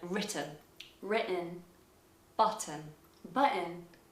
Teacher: if there is a double t the t might actually be glottalized in american for example in the word written written button button i've written